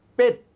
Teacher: পেট বলার সাথে সাথে আপনার সাউন্ড একেবারে ক্লোজ হয়ে গেছে, আপনি চাইলে আর টানতে পারবেন না, চাইলে আর উচ্চারণ করতে পারবেন না, মুখটা অফ হয়ে গেছে।